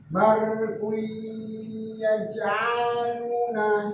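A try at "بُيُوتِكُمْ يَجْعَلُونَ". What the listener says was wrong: Ya ja'aluna. Nah, itu ku nggak masuk ke hidung tuh. Barkui masukkan ke hidung. Kesalahan tuh.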